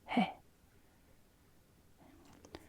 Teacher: That's our he sound, because that's our E with an aspiration.